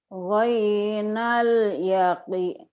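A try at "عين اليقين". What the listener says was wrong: Ibu mah ketukar wae ain cereng gentenya. Ini kan nggak ada titiknya ain ya Bu ya. Ainal yaqin.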